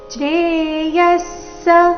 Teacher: ವಿಸರ್ಗದ ಉಚ್ಚಾರಣೆ ಅರ್ಧ ಸ ರೀತಿ ಇದೆ ಮುಂದೆ ಸ ಅಕ್ಷರ ಬಂದ ಕಾರಣ